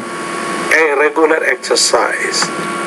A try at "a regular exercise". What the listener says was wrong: Not regular, but a regular exercise. Be careful about that R. Don't pronounce it with quite as much force there.